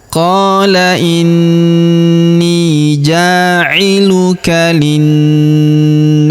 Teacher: Huruf ja kita panjangkan dua harakat karena terdapat alif di depannya.